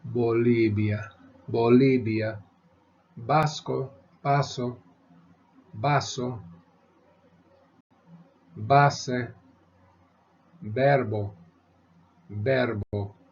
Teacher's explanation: the B and V are both pronounced the same way